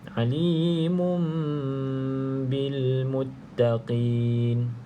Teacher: bacaan iqlab maka bunyi dia Nun kita tukar kepada bunyi mim